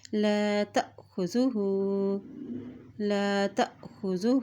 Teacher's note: جب حمزہ کے اوپر جزم آتی ہے تو وہاں پہ جھٹکا دے کے ادا کیا جاتا ہے